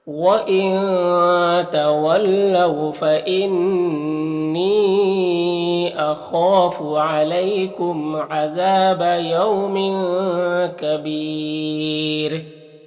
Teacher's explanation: یہاں پر تنوین میں اخفا ہوگا، اور یہاں پر یا مدہ ہے، وقف کریں گے تو سکون سے بدل جائے گا، تو پھر یہاں پر یہ جو ہے را کو باریک پڑھیں گے اور مد عارض وقفی ہوگا